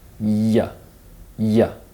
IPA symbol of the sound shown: j